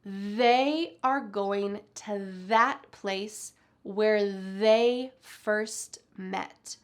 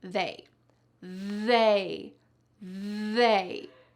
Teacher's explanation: Take a look at this sentence where we're going to use the voiced TH. There's a lot of vibration happening in my throat when I say these sentences.